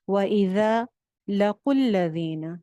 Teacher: یہ جو حمزہ ہوتا ہے یہ جب ملا کے پڑھا جاتا ہے تو یہ ڈراپ ہو جاتا ہے، گر جاتا ہے، اس کو نہیں پڑھا جاتا پھر، یعنی ہم قاف کی پیش کو کیا کر رہے ہیں، لام کے ساتھ جوائن کر رہے ہیں، الذین، بیچ میں سے سارے خالی حروف گر گئے ہیں۔ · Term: حمزۃ الوصل